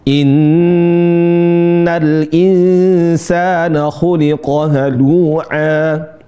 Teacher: Allah Subhanahu wa taala berfirman, "Innal insana khuliqo halua." Perhatikan di sini ada nun bertasydid. Inna ditahan dua harakat atau empat harakat. Boleh dua harakat atau empat. · Perhatikan di sini ada nun bertasydid. Inna ditahan 2 harokat atau 4 harokat boleh.